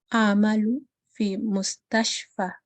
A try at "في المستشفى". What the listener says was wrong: It's not Philly. I was just trying to emphasize the alif and lam. So it is في المستشفى.